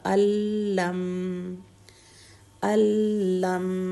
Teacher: میم ساکن ہے تو ساکن لیٹر کا ٹائم ہوگا 1.5 حرکت کا · نون بالکل کوائٹ ہو جائے گا، اپنی ساؤنڈ ختم کر دے گا، الف ڈائریکٹ لام سے ملے گا